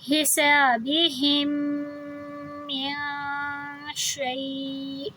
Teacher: ہم جب ہا کو اس میم سے ملائیں گے تو تشدید کی وجہ سے آواز دو حرکہ لمبی ہوگی۔ جب بھی تشدید اور جزم ایک ساتھ ہوں، جیسے پہلے جزم ہے اور پھر بعد میں تشدید ہے، تو ہم اس والے ورڈ کو جزم کے ساتھ نہیں ملائیں گے، ہم اس سے تشدید والے ورڈ کے ساتھ ملائیں گے، کیونکہ اس کو ہم نے دو بار پڑھنا ہے۔